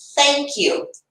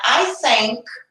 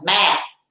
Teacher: Só tem um sopro, não uso as cordas vocais, por isso que ela é chamada de voiceless.